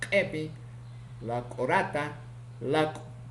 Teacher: Consonante K, oclusivo glotalizado, posvelar, sordo, ocurre en posición inicial, medial y final